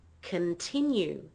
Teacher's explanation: the first and the last syllables are lower in pitch and they're not strong